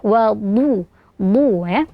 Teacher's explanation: bagian belakang lidah diangkat dan bagian tengah lidah melengkung. Jadi suaranya akan sangat tebal, terutama jika ada dammahnya.